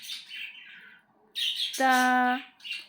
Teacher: زبان کی جو ٹپ ہے، جو نوک ہے، وہ اوپر دو جو دانت ہیں اوپر کے، اس کی روٹ میں، جڑ میں جا کے لگے گی۔